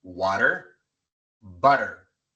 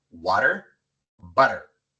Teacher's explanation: Colocamos la lengua en la misma posición como si fuéramos a pronunciar una R en español y sale el mismo sonido.